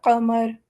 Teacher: قاف موٹی آواز ہے، یہ ہمارے حلق کے بالکل ٹاپ، جو حلق کا سب سے زبان کے قریب والا حصہ ہے، وہاں سے آواز نکلتی ہے. قمر.